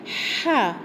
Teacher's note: tempat makhraj dia adalah di pertengahan kerongkong kita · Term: huruf Ha